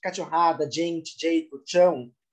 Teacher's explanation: essa variação fonética, né, do j, tch, remete muito ao falar pantaneiro, com influência cuiabana